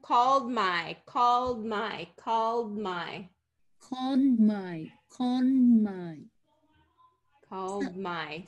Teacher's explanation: we're putting the d in position but we're not really releasing it we're releasing into the m